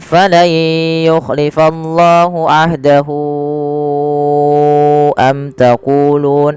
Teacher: kita panjangkan sepanjang 4 harokat sebagaimana mad jaiz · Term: mad silah tawilah